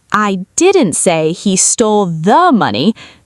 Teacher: Stress the tiny word, the.